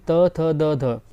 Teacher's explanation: जबकि क्या होता है, त थ द ध, जो ये लाइन होती है ना, ये दंत, इनका उच्चारण स्थान क्या होता है, दंत होता है, क्योंकि त थ द ध। देखिए, आप बोल के देखिए, जीभ जो है वो दांत से टच करती है।